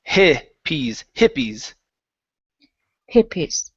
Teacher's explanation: give me a short I instead of saying he pees, it's hippies